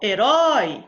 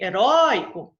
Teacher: Herói recebe porque, ó, herói, a última sílaba foi a mais forte, mas em heróico é a penúltima